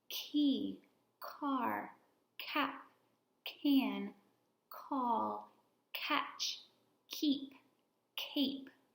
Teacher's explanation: our voice is off so you should not feel vibration in your throat